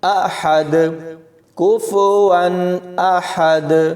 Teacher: تو یہاں پر ہا کی جگہ ہا نہیں پڑھنا، احد، حلق سے آواز نکالیں گے، احد۔ آخر میں وقف کرتے ہوئے دونوں پیش کی جگہ جزم لگے گی اور یہاں پر کلکلا کریں گے